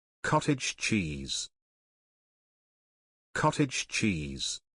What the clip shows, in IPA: ˌkɒt.ɪdʒ ˈtʃiːz